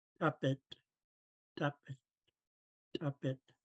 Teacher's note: So to pronounce the pinched P, we snap the P out, making a popping sound